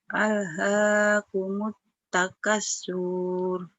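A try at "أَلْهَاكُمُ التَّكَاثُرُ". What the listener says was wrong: Bukan. Yang salahnya di K-nya panjang. Ini K-nya kan hijau.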